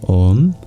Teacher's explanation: Om, if you listen closely, goes from A to U and back to A and U are limits of the vowel space, but so are A and E.